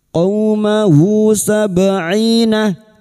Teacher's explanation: Qaumahu sab'ina, ba sukun, huruf ba yang mati asri di tengah kalimat qalqalah sugro, jangan lupa dipantulkan. Sab'ina kasar diikuti sukun 2 harokat matabi'i.